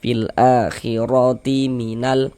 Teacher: Maka ini huruf ro dibaca tabkhim dibaca tebal. Ah sehingga dengan mandikan pangkal lidah kita ketika kita mengucapkannya.